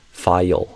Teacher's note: Almost like there's a hidden Y sound, like file, almost like two syllables. If we exaggerate it.